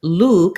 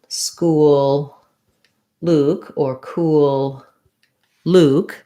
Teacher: And then Luke has the tense oo vowel. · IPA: /u/